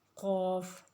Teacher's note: زبان کی جڑ جب اوپر کے تالو کے ساتھ لگتی ہے، اس کے ساتھ ٹچ ہوتی ہے، تو اس سے قاف ادا ہوتا ہے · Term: اقصی لسان